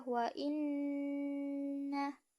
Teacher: terdapat hukum bacaan idgham bigunnah, yaitu melebur dan dengung